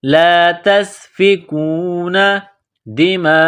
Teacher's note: یہ مد ہے لمبی مد، اس کو 4 الف کے برابر کھینچیں گے۔ دماءکم، کاف کو میم کے ساتھ ملانا ہے، کاف کو باریک کرنا ہے۔